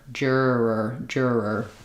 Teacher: And what's difficult there is that when I go from the first to the second I have to drop and restart like juror. So you can think about it almost like I'm doing an initial R and a vocalic R.